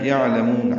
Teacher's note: یعلمون عین ساکن پہ اظہار ہے، لام باریک میم کو لمبا کرنا ہے، وقفاً مد عارض للسکون ہے.